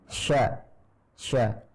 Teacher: shin itu diucapkan dengan menaikkan tengah lidah